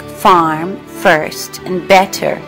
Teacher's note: This means that speakers pronounce an R sound after a vowel in words like farm, first, and better. However, it is not the tapped or rolled R sound we associate with Scottish speakers · In terms of accent, we can say that the Northern Ireland accent is rhotic. This means that speakers pronounce an R sound after a vowel in words like farm, first, and better.